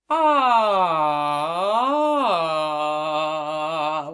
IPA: ŏ